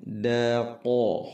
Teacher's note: huruf qaf tebal, qa pangkal lidah